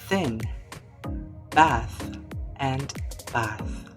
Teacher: In the first example thin, the th sound is voiceless.